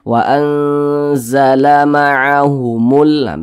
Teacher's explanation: Alif lam qamariyah itu biasa disebut juga dengan izhar qamariyah, karena dia cara membaca huruf lamnya ini dia dibaca jelas, terbaca huruf lamnya itu dibaca jelas.